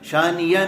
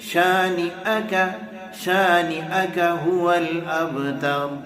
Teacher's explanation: یہاں پہ حمزہ ہے جناب، یا نہیں ہے جو ہم یا پڑھتے ہوئے جا رہے ہیں